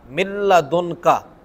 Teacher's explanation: نون ساکن کے بعد لام آئی ہے تو غنہ نہیں ہوا، من لدن کا ہم نے سیدھا سیدھا پڑھ دیا۔